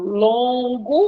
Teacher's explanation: as vogais no meio da palavra diante de m e de n vão ficar com o som n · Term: dígrafo vocálico